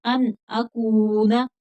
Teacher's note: ان اکون، ان یہاں پر اظہار حلقی ہوگا، ان نہیں پڑھیں گے، ان پڑھیں گے کیونکہ نون ساکن کے بعد حروف حلقی میں سے حرف حمزہ آ گیا، ان اکون، کاف باریک پڑھا جائے گا، کھینچ کر پڑھیں گے، آگے واو مدہ ہے